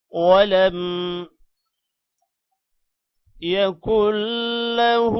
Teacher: یہاں پر کاف کو لام کے ساتھ ملائیں گے، شد کی وجہ سے نون ختم ہو جائے گا، اور ہا پر الٹا پیش ہے، 1 سیکنڈ لمبا کریں گے۔